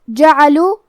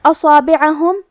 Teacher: صاد حروف تفخیم میں سے ہے تو ہمیں یہ حرف کو بھاری آواز میں پڑھنا ہے